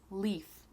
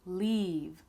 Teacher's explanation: Leaf, the E sound is very fast, leaf. And then in leave, the E sound is longer, leave.